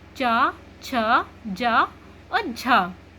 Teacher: ध्वनि ना मुंह में चारों तरफ संघर्ष करके बाहर निकलती है, इसीलिए इन्हें संघर्षी कहा जाता है। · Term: स्पर्श संघर्षी